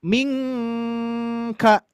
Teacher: Huruf kaf. Berarti samarkan nun sukunnya masuk ke kaf makhrajnya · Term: ikhfa